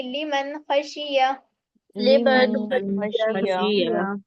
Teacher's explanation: کھینچیں گے نہیں کیونکہ لام زیر تھی، لام کے نیچے زیر کی حرکت ہے، میم نون زبر من ہے نا، اس لیے جلدی ادا کریں گے.